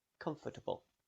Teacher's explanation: The o r after f could be pronounced with a schwa sound